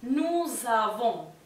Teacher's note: El pronombre nous tiene una S final y se va a pronunciar como una Z porque está en contacto con la A que viene después. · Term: liaison